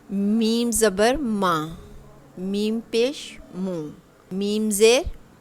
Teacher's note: जब हम मीम letter pronounce करते हैं तो हमें उसकी आवाज़ अपने नाक में भी, अपने नोज़ल पैसेज में भी सुनाई देती है।